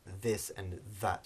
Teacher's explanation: the dhal, as we've now mentioned a few times, is the voiced English TH, so it's a buzzing sound, produced in words like this and that, so dhal.